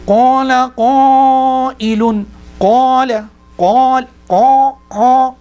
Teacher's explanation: when they recite, they create khankhana, they create a nasal aspect to this.